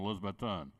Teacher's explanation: he put the emphasis on the last syllable